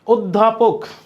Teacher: ধ দ্বিত্ব হওয়া মানে একটা দ একটা ধ, কারণ ধ হচ্ছে মহাপ্রাণ ধ্বনি। মহাপ্রাণ ধ্বনি দ্বিত্ব হইলে একটা অল্প প্রাণ হয়, মানে তার আগেরটা এবং ওইটা হয়।